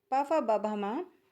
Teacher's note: प फ ब भ म ये ओष्ठ व्यंजन होते हैं